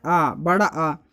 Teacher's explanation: जीभ 3 प्रकार के हिस्सों में विभक्ति होती है, अग्रभाग, मध्य भाग और पश्च भाग। पश्च भाग जब आप बोलते हैं बड़ा आ तो आवाज़ पीछे से आती है, तो पश्च स्वर बड़ा आ हो जाएगा।